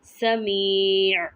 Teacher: यहाँ पे हर्फ मद्दा को 3 या 4 हरकात के बराबर लंबा किया जा सकता है। ये डिपेंड करता है आपकी तिलावत पर।